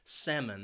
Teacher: it has two syllables and the stress is on that first syllable